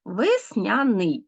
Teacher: у слові весняний відбувається уподібнення за м'якістю так адже м'який звук Нью е який пом'якшує буква я яка